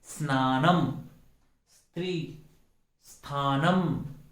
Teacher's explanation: इसके पहले अ लगाने की जरूरत नहीं है।